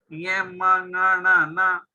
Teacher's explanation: ये उच्चारण करते समय नाक का इफेक्ट होता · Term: नासिका